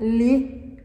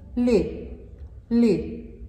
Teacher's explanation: I'm in contact, li, with my upper teeth on my I, li, li.